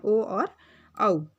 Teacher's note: अ कंठ है और उ ओष्ठ है, तो कंठोष्ठ से बने हैं ओ और औ।